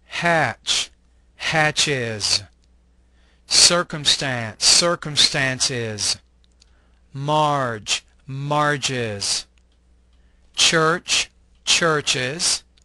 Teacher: add the syllable is when pronouncing the s ending